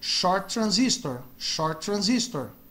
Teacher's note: quando tem dois T's, um T no final de uma palavra, um T no começo da outra, eles pronunciam como um T só